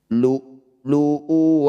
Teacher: maka wau ini kita abaikan u dibaca pendek